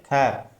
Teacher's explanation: ख में बहुत आप जब बोलोगे इसको वायु बहुत ज्यादा मात्रा में उत्पन्न होगी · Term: महाप्राण